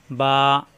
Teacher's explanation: সবাই লক্ষ্য করুন, নিচে 1 নক্তা বা, এই যে খেয়াল করুন, বা 2 ঠোঁট থেকে উচ্চারণ। বা মিলানো ঠোঁট ছেড়ে দিলে হয়ে যায় বা।